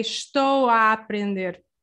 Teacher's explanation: When you say it fast, these two A's together will open and it will almost just sound as one sound, but a more open sound.